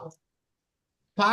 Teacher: এই যে নিচের ঠোঁট আছে, নিচের ঠোঁটটি ওপরের যে দুটি দাঁত আছে, যে বড় দুটি দাঁত আছে, এই দুই দাঁতের আগার সাথে লাগবে। নিচের ঠোঁটটি ফা দুই সামনের উপরের দুই দাঁতের আগার সাথে লাগিয়ে উচ্চারিত হয় ফা।